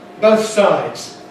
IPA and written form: ˈbəʊθ ˈsaɪdz (both sides)